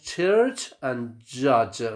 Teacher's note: a combination of a stop at first and the fricative next